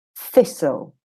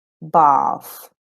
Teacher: it's a voiceless sound where you literally touch the tip of your tongue against the back of your front teeth and you make the sound, okay, without using your vocal cords, as in thistle.